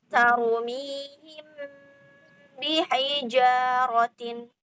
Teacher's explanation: Kalau ikhfa syafawi itu tanpa furjah. Jadi seperti kita ngomong M. Jadi sedikit ada tekanan, tapi tidak boleh ditekan banget ya